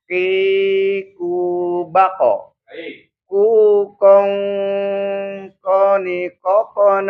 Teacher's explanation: pangkal lidah menyentuh langit-langit bagian atas